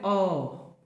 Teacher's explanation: अ बोलने के लिए मध्य भाग का यूज करते हैं, तो मध्य स्वर केवल एक ही है